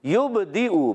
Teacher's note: یبدئ، با میں قلقلہ کریں گے. با حرف قلقلہ میں سے آواز لوٹ کر آئے گی